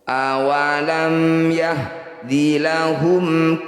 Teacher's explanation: Mim sukun bertemu ya, mim sukun bertemu selain mim dan ba, disebut bacaan izhar syafawi. Bunyi mim sukunnya baca dengan jelas, rapatkan bibir, tidak usah dengung.